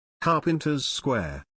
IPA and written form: ˈkɑː.pɪn.təz ˌskweər (Carpenter's Square)